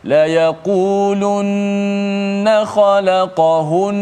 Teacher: Walaupun berhenti di atas nun tu yang bersabdu tetap ada panjang gunnah.